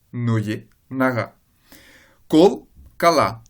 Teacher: la voyelle qui était accentuée dans la première colonne sous la forme d'un O, elle passe en forme non accentuée, réalisée A, dans la deuxième colonne.